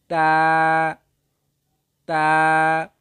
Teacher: জিহ্বার আগা সামনের ওপরের দুই দাঁতের গোড়ার সঙ্গে লাগিয়ে উচ্চারিত হয়